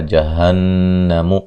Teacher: جہنم نون مشدد پہ غنہ ضروری ہے